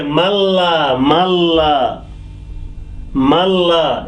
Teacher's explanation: nun sakin goes away and ma joins with the lam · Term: idgham